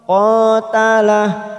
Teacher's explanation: qa fathah diikuti alif dua ketuk. Yang panjang qa.